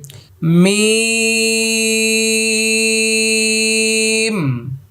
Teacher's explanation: মিম, আমি আয়না দিয়ে বলছি মিম, শুরুতেও ঠোঁট লাগবে, শেষও ঠোঁট লেগে যাবে। মা মা মা মি মা মু, এভাবে মিম।